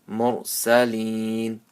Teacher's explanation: Wa salamun alal mursalin. So ra sakin with the pesh before it, it'll be a full mouth